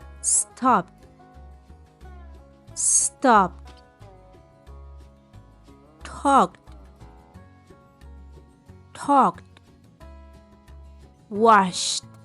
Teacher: al final la Ed suena como t